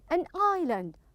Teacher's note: make sure the S is silent so don't pronounce the S